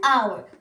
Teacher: Burada H samit olsa da tələffüz zamanı hour deyirik. Yəni H tələffüz olunmur, ona görə an istifadə edirik.